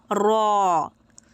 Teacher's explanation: জিহব্বার আগার পিঠ সামনের ওপরের চার দাঁতের মাড়ির সংলগ্ন তালুর সাথে হালকা স্পর্শ করার ফলে উচ্চারিত হবে